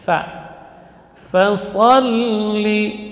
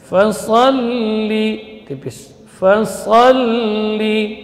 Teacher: Posisi makhrajnya lam yaitu dari ujung tepi lidah, kiri atau kanan. Dari tepi kanan itu lebih mudah.